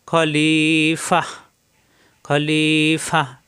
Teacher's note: গোলতা 2 জবর থাকা সত্ত্বেও এখানে মাদে ইবদাল হবে না, একালিপ টান হবে না। শুধুমাত্র গোলতা, গোলতা ছাড়া অন্য যে কোনো হরফে 2 জবর আসলে 1 জবর বাদ দিয়ে একালিপ টানতে হবে, এখানে কিন্তু টানতে হবে না, এখানে বাত হয়ে হা হয়ে যাবে।